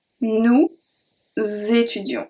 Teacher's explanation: Nous, the S from nous, is going to be transferred to étudions.